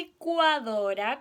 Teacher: Recuerden que la li es lengua arriba, atrás de los dientes, li. Y al tiro la junto con la vocal i.